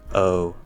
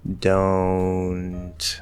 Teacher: whole range of pronunciation for this word so you can say instead of don't and keeping the o through the mouth you nasalize that o partially